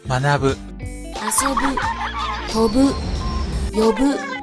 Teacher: Bu verbs tend to be heiban